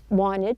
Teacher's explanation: the T sound in the word wanted, the T is dropped. This is not an uncommon practice when the T follows an N.